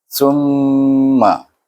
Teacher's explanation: Perhatikan semasa saya menyebut sum itu panjang, 2 harakah, dan berdengung. Iaitu kerana hukum mim bertasydid, wajib kita baca dengan gunnah, iaitu wajibul gunnah.